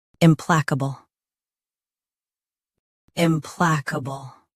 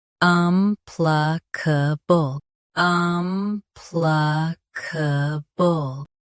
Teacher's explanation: US starts with im. UK starts with um.